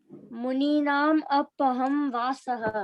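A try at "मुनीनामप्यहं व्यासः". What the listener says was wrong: Apya, there is YA, right? Apyaham vyasaha. Vyasaha.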